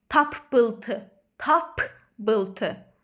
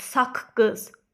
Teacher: yəni birincisi kar olacaq ikincisi cingiltli olacaq